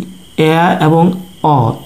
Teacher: এই দুটি ধ্বনি উচ্চারণ করার সময় আমাদের জিহ্বা সর্বনিম্ন স্থানে না থেকে কিছুটা উপরের দিকে উঠে থাকে, সেজন্য এ এবং অ হচ্ছে নিম্ন মধ্য স্বরধ্বনি।